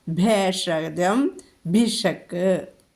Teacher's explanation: അപ്പോൾ അവിടുത്തെ ഭ ഘോഷമാണ്. ഭേഷജം ഒന്നുയർത്തി ഉച്ചരിക്കുക.